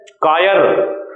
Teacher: कायर जब बोलेंगे तो जीभ हमारी आगे लग जाएगी, तब ये दंतमूल होगा